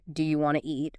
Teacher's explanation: Sometimes sounds are dropped entirely like the T often disappears in want to